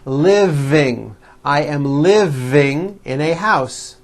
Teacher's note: yes the V is voiced living